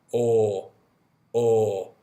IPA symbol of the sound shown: ɔ: